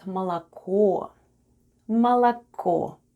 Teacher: And О at the end is *stressed* and is pronounced as /o/ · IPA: /malako/